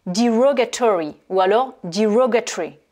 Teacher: c'est un accent sur la deuxième syllabe